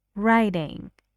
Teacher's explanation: The stress is on the first syllable. So ing is unstressed.